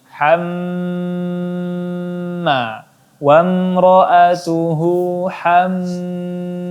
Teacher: hamma di mimnya ditahan lagi dan digungkan lagi